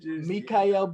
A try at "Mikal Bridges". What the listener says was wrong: Nah, that's an extra syllable. Mikal. It's just Mikal.